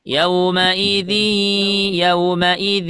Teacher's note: ada tanwin bertemu dengan ya pakai gunah enggak G Gun ya Jadi kalau kita bacanya harus ada suara dari hidungnya